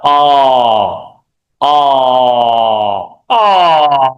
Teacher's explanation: Quite a big open sound and very common in Thai.